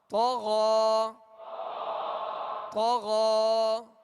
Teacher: یہ یا اس میں پڑھی نہیں جائے گی بلکہ غین کے اوپر جو کھڑا زبر ہے یہ الف مدہ کے قائم مقام ہے. لہٰذا یہاں غین کے اوپر کھڑا زبر پڑھیں گے اور ایک الف کی مقدار کھینچ کر ادا کریں گے